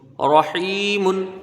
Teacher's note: را کے اوپر زبر ہے، اس کو پر پڑھا جائے گا